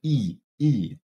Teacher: that is the high front unrounded tense vowel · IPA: [i]